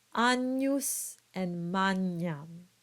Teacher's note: And finally, you get that ny sound in words like agnus and magnam.